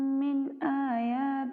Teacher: من یہاں پہ ہم اظہار کریں گے کیونکہ آگے حروف حلقی میں سے حمزہ ہے